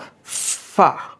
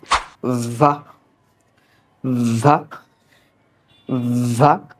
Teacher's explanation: জায়গা থেকে উচ্চারণ হবে কিন্তু একটু সাউন্ড দিতে হবে যেমন দেখো এইখানে একটু গলায় কি হবে কণ্ঠনালীতে কম্পন সৃষ্টি হবে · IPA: /v/